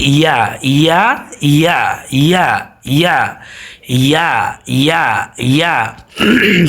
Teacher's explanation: সবসময় মনে রাখবেন ইয়াটা উচ্চারিত হয় জিহ্বার মধ্যখান থেকে।